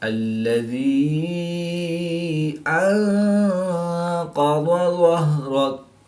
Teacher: نون ساکن کے بعد قاف حروف اخفا میں سے ہے تو یہاں پر اخفا یعنی غنہ زمانی کر کے پڑھیں گے۔